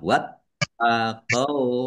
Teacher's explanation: taknya dibaca double, ada tasdidnya, ditekan dan ditahan biar tampak doublenya.